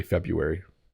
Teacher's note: we just decided it was too hard to say the R